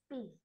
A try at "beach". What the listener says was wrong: mình phải phát âm cái âm cuối của từ beach ra nè, beach.